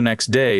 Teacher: next day loses that first T and becomes next day. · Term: elision